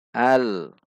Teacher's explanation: saat bunyi Lam sudah tidak terdengar ujung lidah kita masih di titik lem untuk menghindari pantulan jika dilepas dia akan hal-hal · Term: lam sukun